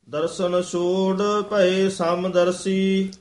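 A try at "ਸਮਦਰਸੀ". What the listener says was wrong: समदर्शी बोला, समदर्शी, समदर्शी कसके नहीं बोलना।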